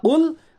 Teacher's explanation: قاف کا جو مخرج ہے وہ ہے زبان کی جڑ اور اس کے مقابل اوپر کا تالو۔ میں پھر ریپیٹ کرتا ہوں، قاف جو بڑا قاف، اس کا مخرج ہے زبان کی جڑ اور اس کے مقابل اوپر کا تالو۔